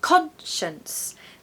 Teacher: We really need a strong con in the first syllable. It's not a schwa. No, it has to be stressed.